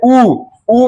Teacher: जैसे में उ बोलिएगा तो ओठ गोल हो जाएगा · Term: वर्तुल स्वर